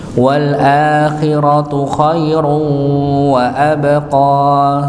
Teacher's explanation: Wal akhiratu khairu maka tanwin ketemu wawu maka dibaca dengan idgham bi gunnah ya, dan dia sebagai idgham nakisnya karena kita temukan di situ tidak ada tasydidnya ya. Wa abqa ba'nya dipantulkan, wa abqa ini dipantulkan.